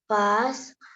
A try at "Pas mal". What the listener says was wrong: Not pass mal. It is pa mal.